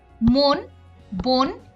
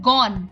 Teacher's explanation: একাক্ষর শব্দের প্রথমে অ এবং পরে দন্তন থাকলে অ এর উচ্চারণ ওকারের মত হয় যেমন মন বোন ইত্যাদি এখানে সবগুলোই কিন্তু ও এর মত উচ্চারণ